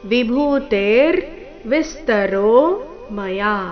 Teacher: ವಿಭೂತೆರ್ ಭೂ ಮಹಾಪ್ರಾಣ ದೀರ್ಘ ತೆ ದೀರ್ಘ ನಂತರ ರ